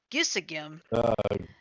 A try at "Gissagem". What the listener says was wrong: Yeah, Gissahim. If it's GH is pronounced H. Gissahim.